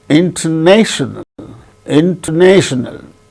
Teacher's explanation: the third syllable gains a primary stress first syllable gains secondary stress